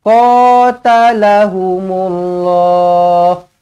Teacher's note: Q panjang ada Alif kecil mad asli dua harakat